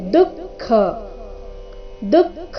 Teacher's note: ಮೊದಲು ದು ಅಲ್ಪಪ್ರಾಣ ನಂತರ ಖ ಮಹಾಪ್ರಾಣ